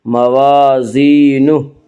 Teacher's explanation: ما ثقلت، ما ثقلت موازینہ، الف مدہ، الف ہمیشہ مدہ ہوتا ہے، الف سے پہلے ہمیشہ زبر ہوتا ہے، الف مدہ کو ایک الف کے برابر کھینچ کر پڑھیں گے